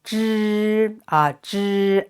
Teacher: it's the first tone it is flat so keep it longer